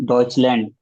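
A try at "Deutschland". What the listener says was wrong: मुंबई, डॉइचलैंड, लैंड नहीं होता, डॉइचलैंड।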